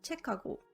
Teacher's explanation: hiet combines with the plosive consonant and creates an aspirated consonant. So biup turns to piup, digut turns to tiut, jiut turns to chiut, and giok turns to kiuk.